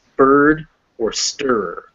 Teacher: it's a schwa before an r that is at the end of the word or followed by another consonant